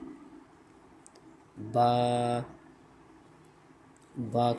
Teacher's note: बा दोनों होठों के अंदरूनी तरीके मिलने से अदा होता है।